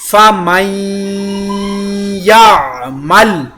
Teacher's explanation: یہاں پر میں نے نون ساکن کے بعد حروف یرملون کی یا شدہ نون کا ادغام اور غنہ دونوں کیا